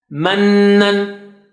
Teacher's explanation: when noon and mim have shadda, you stretch it double, you do gunna.